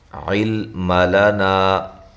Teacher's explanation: لا الف مدہ ہے۔ علم لنا، لام کو ہلانا نہیں ہے، عین کو واضح نکالنا ہے اور اس لام کو موٹا نہیں کرنا، لمبا نہیں کرنا، اور جب اس کو ملا کے پڑھیں گے تو مد ہوگی لنا الا، تو یہ جو مد ہے مد جائز ہے۔